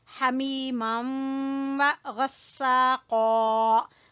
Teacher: قاف کو بھی موٹا پڑھیں گے